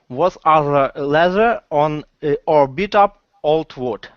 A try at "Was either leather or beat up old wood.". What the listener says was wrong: Okay, was either. Okay, bring your tongue back in to say the sound for both either and leather. Okay, was either leather or beat up old wood. Okay, because your tongue gets a little trapped in there, just a little bit.